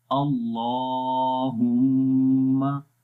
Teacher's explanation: आवाज़ को नाक में लेकर जाएंगे और वहाँ पर 1 सेकंड लंबा करेंगे। तो इसको पढ़ेंगे अल्लाह, नाम को भी लंबा करेंगे, इसके ऊपर खड़ी ज़बर है। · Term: गुन्ना